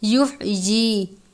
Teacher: باریک والی ہا ہے، حلق سے ادا کرتے ہیں